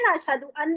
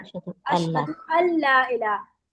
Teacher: सही है, तो नून नहीं पढ़ते, जब नून के आखिर के बाद लाम आता है तो लाम में नून नून में मर्ज हो जाता है, सॉरी ला नून लाम में मर्ज हो जाता है और नून बिल्कुल नहीं पढ़ा जाता